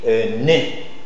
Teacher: C'est une consonne nasale, occlusive, dentale, sonore.